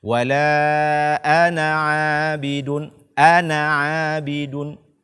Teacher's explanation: Membacanya dengan pendek ketika waqaf. Kata ana yang artinya saya di dalam Al-Quran hendaknya kita baca tanpa huruf mad atau tanpa membacanya dengan panjang ketika kita meneruskan bacaan.